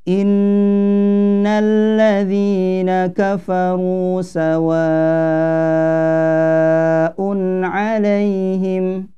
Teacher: mad wajib muttasil ini panjangnya ya lima harakat Maka kalau bisa kita sempurnakan sampai lima harokat Contohnya seperti ini